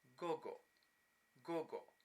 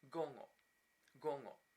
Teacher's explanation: It can be pronounced either with both a g, gogo, gogo, or with the initial consonant oral, g, and the internal one, nasal, ng